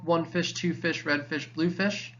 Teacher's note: all the stressed syllables come first